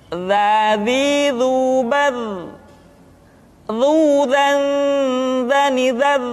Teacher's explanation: diucapkan dengan menyentuhkan ujung lidah dengan dinding dua gigi seri bagian atas seperti kita mengucapkan huruf tha. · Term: huruf dza